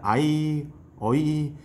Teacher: 아이, 어이 이렇게 약간 이중모음으로 발음했었습니다. 옛날에는.